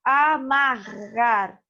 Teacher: Veja que é um som do R dobrado, né? Que é forte. Duas letras que representam um som forte.